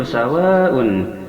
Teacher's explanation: sawa ini adalah mad wajib muttasil yang panjangnya 5 harakat, dikarenakan ada mad bertemu hamzah satu kalimat.